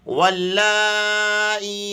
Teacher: کر پڑھیں گے، واو لام زبر واللام کھڑا مد زبر لا، اور اس لام کو 3 الف کے بقدر کھینچ کر پڑھیں گے، کیونکہ اس کے اوپر بڑی مد لگی ہوئی ہے